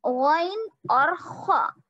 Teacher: गैन और खा, ये है अदनाए हलक, यानी हलक के इब्तिदाई हिस्से से निकलते हैं।